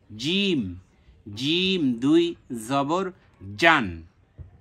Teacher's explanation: জিমটা শক্ত হবে জিহ্বার মাঝখান থেকে জিহ্বার মাঝখান তার বরাবর উপরের তালুর সঙ্গে লাগিয়ে তিনটা হর উচ্চারিত